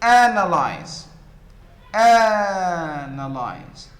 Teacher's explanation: the first syllable is the stressed one, and so it is louder, it is higher, it is longer